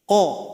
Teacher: Keluarnya yaitu pangkal lidah pangkal lidah setelah itu suara kita dinaikkan kan ke langit-langit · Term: huruf qof